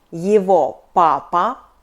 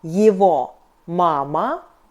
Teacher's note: We write его, but we pronounce [yeevo].